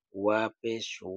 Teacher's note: তবে এটা খেয়াল রাখতে হবে ওয়া পেশ ২ ঠোঁট থেকে ২ ঠোঁট থেকে যেভাবে ওয়ার উচ্চারণ হবে, ওয়ার হরকতের উচ্চারণ সেভাবে হবে।